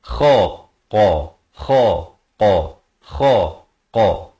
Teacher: Kha di hujung kerompong, qa pula di pangkal lidah. Ini makhraj yang berbeza.